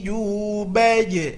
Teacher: makhrajnya adalah tengah lidah ke tengah-tengah langit atas kebiasaan kita ujung lidah ke langit-langi atau salah maka bunyinya adalah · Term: huruf Jim